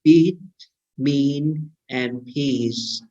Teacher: Long E is nearer to the primary cardinal vowel number 1, right? And it is closer and more front, right, in compared to the short vowel E, right? · the tongue shape is not as much different from the primary cardinal vowel number 1, but the lips are only slightly spread.